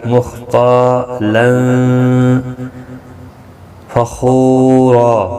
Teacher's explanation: تا الف مدہ ہے، ایک الف کی مقدار کے برابر کھینچ کر پڑھیں گے۔ تنوین کے بعد حروف اخفا کا فا اخفا حقیقی ہوگا